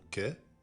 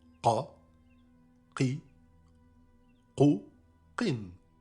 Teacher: La lettre Qaf est un K emphatique, c'est-à-dire que la lettre est grossie et n'est pas amincie comme la lettre K précédemment vue. Elle se prononce comme la première lettre du mot arabe qahwa, café.